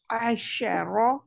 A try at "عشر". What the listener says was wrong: आइन को लंबा भी नहीं करना और हलक से नहीं करनी। आशारो।